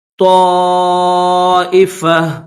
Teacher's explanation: یہ گول تا ہے تو تا لیکن یہاں پر اسٹاپ کریں گے تو اس کو ہا پڑھیں گے.